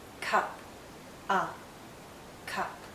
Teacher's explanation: It's a very short sound and also a very relaxed sound. If you were to hold this sound out, it becomes the sound we make when we're thinking aloud, when we don't know what to say.